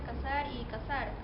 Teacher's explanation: no hacen diferencia entre la s la z o la c